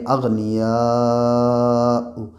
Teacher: یا کے اوپر زبر ہے اور الف سے پہلے یا کے اوپر زبر ہے، اس لیے الف مدہ ہوگا اور اسے 4 الف 3 الف کے برابر کھینچ کے پڑھیں گے، کیونکہ یہاں پہ مد ہے اور حرف مد کے بعد حمزہ اسی کلمے میں ہے، اس لیے یہاں پہ مد متصل ہوگا اور اسے کھینچ کے پڑھیں گے